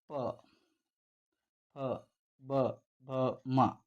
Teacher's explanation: ಪ ವರ್ಗದ ಅಕ್ಷರಗಳು ತುಟಿಯ ಸಹಾಯದಿಂದ ಉಚ್ಚರಿಸಲ್ಪಡ್ತಕ್ಕಂಥ ಅಕ್ಷರಗಳು. ಸೊ ಹಾಗಾಗಿ ಈ ಒಂದು ಅಕ್ಷರಗಳನ್ನು ಓಷ್ಟ ಅಕ್ಷರಗಳಂತೇಳಿ ಕರಿತಕ್ಕಂಥದ್ದು ನೋಡ್ತೀವಿ.